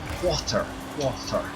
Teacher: we don't pronounce that t for whatever reason · people from Dublin don't say the t uh the T that's in the middle of words